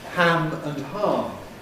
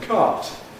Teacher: Northerners have short and long ah because they have minimal pairs like ham and h or cat and cart.